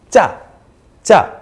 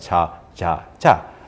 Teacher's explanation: So if you're trying to say cha, but the other person doesn't understand you, try it at a higher pitch and they might understand you a little better. Try with a little more explosiveness in your sound, like cha, cha, instead of making it sound softer, like cha, cha, cha.